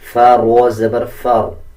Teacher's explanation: فا کے اوپر زبر ہے تب بھی را کو پر یعنی موٹا پڑھا جاتا ہے۔